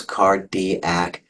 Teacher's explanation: And then the third to last syllable is the antepenult. And it's the antepenult that gets the emphasis. Almost always, not always, but almost always.